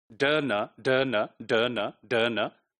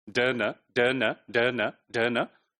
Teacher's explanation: your soft palate is lowered and the nasal cavity is allowed for the air to pass through it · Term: nasal sound